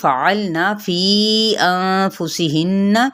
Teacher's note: فعلنا فی انفسہن یہاں پہ 4 حرکت لمبا کریں گے، نون پہ اخفا اور اس نون مشدد پہ غنہ کریں گے